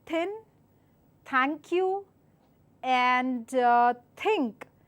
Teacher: this is a less vibrating sound no vibration attached to it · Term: slight th sound